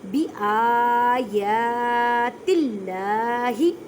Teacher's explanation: اللہ کے لفظ سے پہلے زیر ہے تو اللہ کے لفظ کو باریک پڑھیں گے, کیونکہ جب اللہ کے لفظ سے پہلے زیر آ جائے تو اللہ کے لفظ کو باریک پڑھتے ہیں.